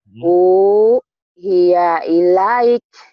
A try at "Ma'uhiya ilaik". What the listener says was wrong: Jangan dipotong jadi U-nya. Ma'uhiya ilaik. Ma'uhiya ilaik. Coba gabungin, jangan diputus.